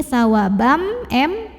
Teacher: tanwin fathah yang bertemu dengan huruf mim maka tanwin fathah ini masuk atau lebur ke mim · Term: idgham bighunnah